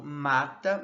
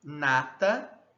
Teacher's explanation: Apesar de ambas serem vozeadas, uma é bilabial e a outra é alveolar.